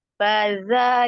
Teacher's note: Fadza, tapi za-nya lembut, ujung lidah ada di ujung gigi seri atas